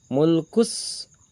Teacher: Mulkus, sama, masuk ke dalam idgham syamsiah. Alif lam bertemu dengan huruf sin, alif lamnya samar, masuk ke dalam, melebur ke dalam huruf sin